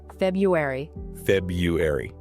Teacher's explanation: the vast majority of native speakers simply drop the first R entirely and say February.